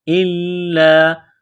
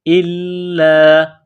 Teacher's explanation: حمزہ کو لام کے ساتھ ملانا ہے، لام میں سختی کرنی ہے